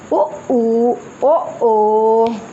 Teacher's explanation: जिन स्वरों का उच्चारण करते समय हम ओंठ गोल करते हैं उसे वृत्ताकार स्वर कहते हैं